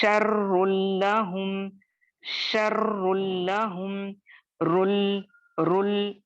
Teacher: रॉ को मोटा करेंगे, लाम को वही तरकीक के जैसे अदा करेंगे